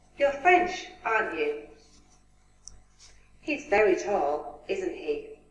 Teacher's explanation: this is asking for confirmation as you can notice that this the intonation goes falling falling intonation